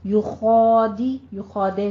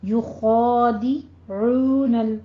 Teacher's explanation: عین کو وسط حلق سے ادا کیجیے اور دونوں ہونٹوں کو گول کر لیں تاکہ ادائیگی درست ہو۔